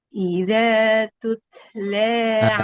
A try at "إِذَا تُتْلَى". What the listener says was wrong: Jangan dinabro. Iza tutla gitu. Jangan dihentak. jangan dihentak.